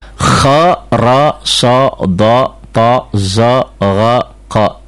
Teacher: Ini adalah huruf-huruf yang berbunyi O manakala dia berbaris fathah yang sangat ketara.